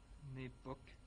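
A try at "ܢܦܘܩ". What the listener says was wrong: Nepok, faut pas avoir peur de géminer.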